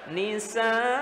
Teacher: ada penekanan di ujungnya ketika dia waqaf